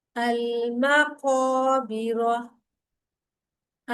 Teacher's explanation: जबान का जो पिछला हिस्सा है उसे हलक की तरफ पीछे खींच कर तालू से लगाकर जरा जोर लगाकर कौफ अदा करें